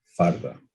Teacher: a lateral is turned into a tap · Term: rhoticization